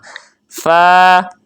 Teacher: آگے فا دو حرفی ہے، فا ایک الف کے برابر، لیکن فا میں یاد رہے ہونٹ گول نہیں ہونے چاہیے. فا میں ہونٹ کا اندرونی حصہ جو ہے اس پر اوپر والے دو بڑے دانتوں کو لگائیں گے